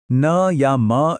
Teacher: न या म जैसी जो नासिक्य ध्वनियां हैं उन्हें बोलते समय मुंह तो बंद रहता है लेकिन हवा नाक के रास्ते से बाहर निकलती है जो उन्हें एक खास तरह की गूंज देती है।